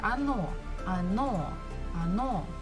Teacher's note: the second syllable is stressed so we must pronounce it the first one is not so we pronounce it as a